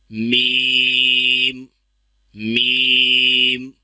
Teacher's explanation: اس کو ادا کرتے وقت میم کو ادا کرتے وقت آواز کو ناک میں نہیں لے کے جانا، اس کو ناک میں نہیں پڑھنا، میم نہیں پڑھنا بلکہ میم، میم.